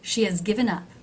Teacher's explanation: the word has is very low in Pitch it's actually been reduced and I've dropped the H